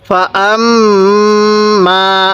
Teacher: ফাআম্মা, এই মিমের মধ্যে আমরা গুনাহ করব, আগে গুনাহটা শেষ করব, পরে টান দিব। ফাআম্মা, দুই ঠোঁটকে একসাথে লাগাইয়ে আমাদের গুনাহটা সহি উচ্চারণ হবে।